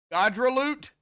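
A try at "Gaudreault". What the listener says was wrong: Godro. Now I don't even need to pronounce the L and the T at the end, actually. Those are mute.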